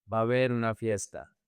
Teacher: Remember the three A's connect.